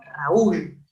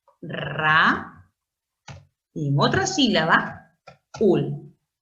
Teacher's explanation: Y si un alumno es observador, diría, pero Miss, al separar en dos sílabas distintas, esta palabra se convierte en aguda, porque el acento está en la última sílaba · En Raúl encuentro una vocal abierta, A, y una vocal cerrada, U. Si el acento estuviera en la abierta, sería un diptongo. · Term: hiato acentual